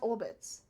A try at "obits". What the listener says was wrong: Obits. Not orbits. There's an R there. That means something very different.